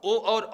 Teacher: ओ और औ के उच्चारण में कंठ और ओष्ठ दोनों हेल्प करते हैं